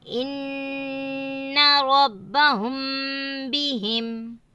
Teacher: میم ساکن کے بعد با آئے تو میم ساکن کو غنہ کے ساتھ پڑھیں گے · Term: اکفا شفوی